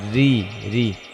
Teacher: রয়ের নিচে জের হলে রটা পাতলা করে পড়তে হবে, রি রি।